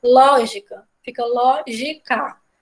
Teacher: Lógica, fica lógica. De trás para frente o ló é o mais forte, então é uma proparoxítona.